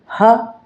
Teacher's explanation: ह गले से बोलते हैं